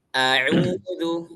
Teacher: Jadi jangan jadi panjangin hamzahnya